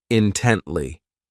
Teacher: This adverb has 3 syllables, and the stress is on that second syllable, intently. So this word means that you're just giving all of your attention to something, that you are sharply focused on this thing.